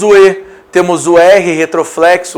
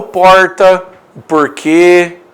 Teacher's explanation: Mas nós temos o E, temos o R retroflexo.